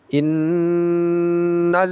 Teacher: Tekanannya tidak kuat tetapi ghunahnya yang lama.